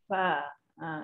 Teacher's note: satu bibir ditekan pada gigi kacip depan. Bibir, satu bibir tu perut bibir ya, bukan luar bibir ni. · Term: huruf fa